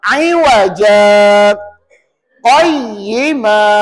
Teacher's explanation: kita tahan nafas dua harakat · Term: sakta